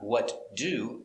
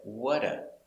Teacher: we link the words not what do but what a the t kind of disappears we pronounce it with the d